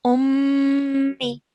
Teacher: I spend 2 seconds on this meme sound, okay, on the nasal sound. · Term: mim mushaddad